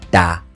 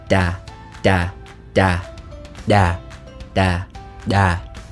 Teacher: the next sound that we have is the voiced alveolar implosive this is also similar to the English D sound but like the B sound in Vietnamese it's actually made deeper in your throat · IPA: ɗ